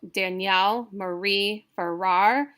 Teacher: So Danielle Marie Farrar, it's all iambic. It's unstressed, stress, unstressed, stressed, unstressed, stressed.